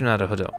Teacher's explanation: all too often the r sounds too much like another d